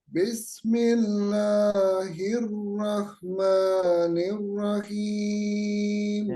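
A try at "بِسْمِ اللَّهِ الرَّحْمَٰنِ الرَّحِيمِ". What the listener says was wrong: Nah, ini basmalahnya sama dengan Ibu yang tadi, Bu Ati. Dikurangi dikit, Pak, kadarnya yang 2 rakaat.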